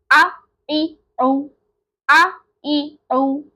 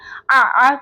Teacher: اس میں ہماری آواز حلق کے درمیانی پارٹ سے نکل رہی ہوتی ہے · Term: عین کا مخرج